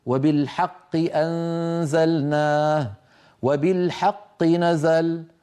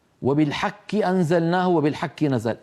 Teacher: القاف من اقصى اللسان مع الحنك اللحمي الكاف من اقصى اللسان فوق مع الحنك اللحمي والعظمي